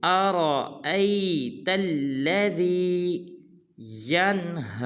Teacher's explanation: بعض مسلمان پڑھتے ہیں ارأیت الذی یا بعض پڑھتے ہیں ارأیت الذی، یہ بالکل غلط ہے، نہ حمزہ کو لمبا کرنا ہے نہ را کو لمبا کرنا ہے